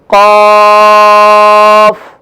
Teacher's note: قاف کا مخرج جو ہے زبان کی جڑ آخر جو کوے کے قریب ہے وہاں سے ادا ہوگا